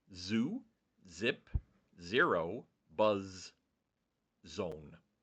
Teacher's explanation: you can really feel the vibration on the Z sound